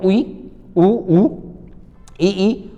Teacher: संवृत जहां मुंह पूरा बंद होगा मुंह बंद होगा